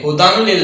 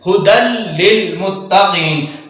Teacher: تنوین اور نون ساکن کو لام میں مدغم کریں گے بغیر غننے کے، یعنی ہدن لل نہیں کریں گے، ہدن لل نہیں، ہدل للمتقین۔